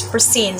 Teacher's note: the stress is in the second syllable, which is seed